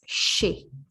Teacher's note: We do not hear the Z sound here.